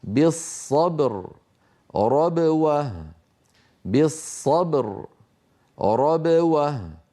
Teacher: ينحبس الصوت خلف الشفتين ثم ينطلق ويهتز الوتران الصوتيان عند نطق الباء المقلقله